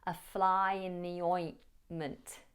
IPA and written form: ə flaɪ ɪn ði ˈɔɪnmənt (a fly in the ointment)